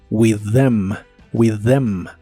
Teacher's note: La TH de estas palabras suena como una sola D vibrante